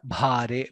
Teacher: Bha Mahaprana and Dirgha